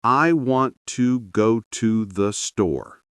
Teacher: The strong words want, go, store, carry the meaning. Everything else connects softly. If you stress every word, you sound tense.